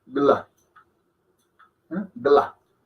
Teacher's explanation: Entonces suena como un gl, más que un gal. Un gl. Gla.